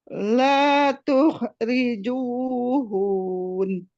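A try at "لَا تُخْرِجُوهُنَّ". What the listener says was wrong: Nah itu kalau itu mad itu hun. Hu-nya yang panjang, hati-hati. Nah ini sering keliru nih. Bukan hun tapi hun. Hun an-nya Bu, an-nya ditahan. La tukhrijuhun.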